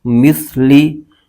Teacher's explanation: سا کو اس کے مخرج سے ادا کرنا ضروری ہے، ورنہ سین کی آواز نکل جائے گی جو کہ غلط ہو جائے گا۔ سا کا مخرج یہ ہے، زبان کا سرا اوپر کے دانتوں کے اندرونی کنارے سے یہ حرف ادا ہوتا ہے۔